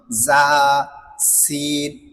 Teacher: তো আবার আমি মাখরাইটা বলতেছি, জিহ্বার আগা সামনের নিচের দুই দাঁতের পেট ও আগার সঙ্গে লাগাইয়া।